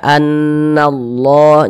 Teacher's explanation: Allah ini yang di tengah Ini huruf lam lam jalalah lam jalalahnya ini dibaca tebal dibaca tabkhim sehingga dibaca annallah jangan dibaca nalla jangan tapi dibaca annallah begitu